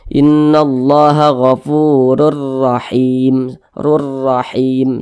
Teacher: tanda baca dahtain di sini huruf ro memiliki tanda baca fathah kedua-dua huruf ro ini dibaca tafkhim dibaca tebal sehingga pangkal lisan kita pangkal Kal lidah kita ketika mengucapkannya naik